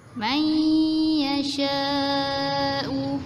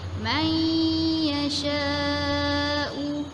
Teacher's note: Kita masukkan huruf nun ke dalam huruf ya sambil kita dengung.